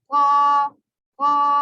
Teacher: پیچھے کی جو جڑ ہے وہ اوپر لگے گی تو یہ موٹا پڑ جائے گا